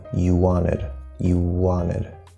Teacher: when we go from an U or an O to a W sound, not necessarily letter, W sound, at the start of the next word, we're going to just connect them and make it sort of one long W